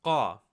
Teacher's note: Instead of saying Ka, you're going to produce that Ka sound, but further down from your vocal cords. It's almost like a glottal stop to say Qa. This is used in words like qabra, which means gravestone.